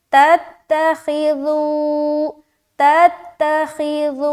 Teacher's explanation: नरमी के साथ और वाव मद्दा और मद भी करना, ठीक है। तो यहाँ पर 3 से 4 अलिफ खींचेंगे